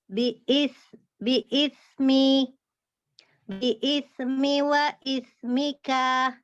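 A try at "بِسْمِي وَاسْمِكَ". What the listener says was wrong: Ini sa-nya belum dapat nih. Harus terdengar mengalir udaranya. Biismi wa ismik. Masih ketahan. Coba biismi. Lainnya semua harus dalam kondisi wakaf ya.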